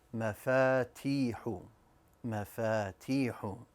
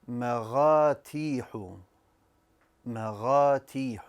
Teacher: I pronounced the fa as a ghain.